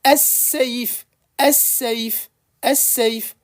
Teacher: Bah, si je mets al devant, ça sera as-saïf, as-saïf, as-saïf. Le lam, il est complètement mangé, il est complètement assimilé.